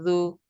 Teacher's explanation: জিবার আগে দাঁতের গা লাগিয়ে জু